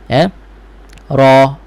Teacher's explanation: Tabara dan tebal lah huruf ra ini kerana baris atas. Tebal ada pergerakan pangkal lidah. Pangkal lidah naik, maka ra itu jadi tebal.